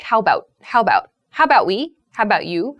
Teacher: the a sound kind of disappears